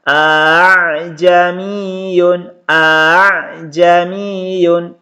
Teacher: hamzah yang kedua dibaca samar atau dibaca ringan. Jadi cara membacanya a'jamiyun, a'jamiyun. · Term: tashil